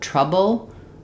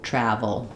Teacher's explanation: Vv to make a restricted air. So B closes the air entirely. Uses both lips. VV is the upper lip and the lower teeth.